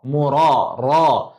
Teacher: ra baris atas dibaca ra, bukan ro. Jangan muncung.